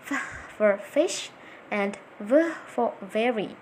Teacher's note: labiodentals, formed with the bottom lip and the top teeth